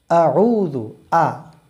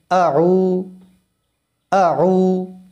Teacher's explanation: আউযু, প্রথম শব্দটা হামজা, খুব শক্তভাবে বলতে হয়। কণ্ঠনালীর শুরু, এখান থেকে উচ্চারণ হয়।